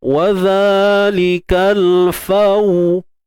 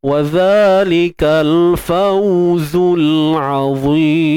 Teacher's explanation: Waw ni dia huruf syafatain, huruf bibir, kan? Jadi kena muncung bibir kita. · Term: bacaan lin